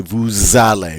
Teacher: because this form starts with a vowel, we get to do this liaison with the S